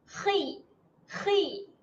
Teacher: Macam nak buang kahak. Kalau kita pegang dekat hujung kerongkong, dia ada getaran sedikit lah. · Kat sini K-H-O. Makhraj huruf kha adalah di hujung kerongkong, seolah-olah dia macam nak buang kahak sikit. Khi. Macam nak buang kahak.